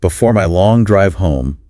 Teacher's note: putting emphasis and a bit of a humorous tone on home